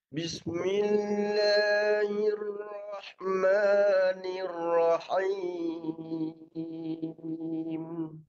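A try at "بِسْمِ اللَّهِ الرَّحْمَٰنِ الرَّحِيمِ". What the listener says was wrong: Yang sabdu last sekali tu. Nir. Bagi bergetar dulu. Nir rahim.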